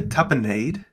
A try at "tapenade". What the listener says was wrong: No, tapenade. Did you just add a syllable to tapenade?